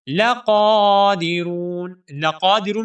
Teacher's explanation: اس قاف کو ہم موٹا کر کے پڑھیں گے، اور قاف کے اوپر کھڑی زبر ہے، اس قاف کو 1 الف کے برابر لمبا بھی کریں گے، ٹھیک ہے۔ لَقَادِرُونَ، لَقَادِرُونَ میں جو را ہے، اس را کو ہم قر یعنی موٹا کر کے پڑھیں گے، اور 1 الف کے برابر لمبا بھی کریں گے، کیونکہ یہاں پر واو مدہ ہے۔